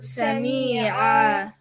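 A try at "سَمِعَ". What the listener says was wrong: That's too long. Sami'a. If you said Sami'a, there would have been a ya here, like Sami'a. So Sami'a.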